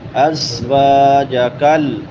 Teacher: واو کے بعد الف مدہ ہے، ایک الف کے برابر لمبا کریں گے